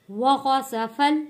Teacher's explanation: سین سیٹی والا لفظ ہے، فا کو جوڑیں گے یہاں پہ لام یعنی کہ جو ساکن ہے جزم والے لام کے ساتھ۔